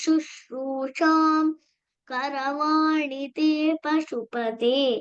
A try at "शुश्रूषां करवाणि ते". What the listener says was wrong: उत्तमं तत्र शुश्रूषां करवाणि you took a break pause after शुश्रूषां you could also combine the parasavarna and chant there okay once again last line